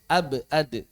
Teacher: huruf qalqalah, ba dengan dal, maka sama suara qalqalahnya enggak beda.